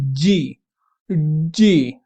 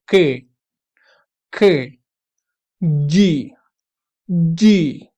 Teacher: तो अब अगर आप बोलेंगे जी, जी, तो आपकी टंग जो है वो बेसिकली आपके सॉफ्ट पैलेट को टच करने की कोशिश करती है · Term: वेलर स्टॉप प्लॉसिव्स